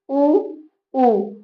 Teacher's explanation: बोल के आप देखिए इसमें ओठ जो है आपका गोलाकार हो जाएगा। · ओठ जो है ना चोंच जो है ना गोल हो जाता है और हवा को रोक के निकालता है। तो इसका उच्चारण हो जाएगा आपका ओठों से और ओठों को हम तो ओठ बोल ही सकते हैं ना। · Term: ओष्ठ